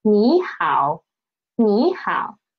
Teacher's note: We should change the former one into second tone.